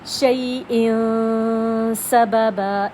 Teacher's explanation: نون کی اور تنوین کی آواز کچھ ناک میں چھپ رہی ہے، اس کو اخفا کہتے ہیں